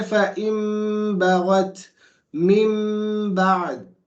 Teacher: When the noon is followed by a ba, when the noon sakina is followed by a ba, you don't read it as a noon, you read it as a meme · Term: qalb